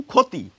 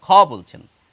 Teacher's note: লিখছেন ক্ষয়, মুখে বলছেন ক্ষয়, খ বলছেন, অর্থাৎ ক্ষীয় বানানে থাকলেও উচ্চারণে কিন্তু খ হয়ে যায়।